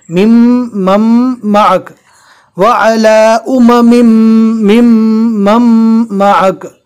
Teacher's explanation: پھر اس میم کو ڈائریکٹ اس میم کے ساتھ ملانا ہے، جزم والے حرف کو نہیں پڑھنا ہے، اس لیے کہ اس کے بعد تشدید والا حرف ہے